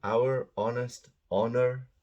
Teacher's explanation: So these are pronounced with an O at the beginning, not an H. The H is silent.